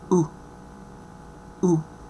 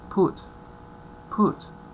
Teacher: low, rounded, relaxed, short, and the example that we have is put